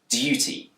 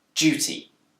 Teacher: In Britain, this word can be pronounced with a d sound, duty. But it's also commonly pronounced with a j sound, duty. This change from dir to j is called yod coalescence.